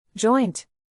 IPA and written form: dʒɔɪnt (Joint)